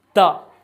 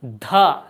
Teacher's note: दांत, तो दोनों दांतों के पास आ रही है। हमारे दांत यहाँ हो जाते हैं सामने और जीभ दांतों के बीच में आती है।